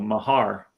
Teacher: he pronounced it uh with the emphasis on the second syllable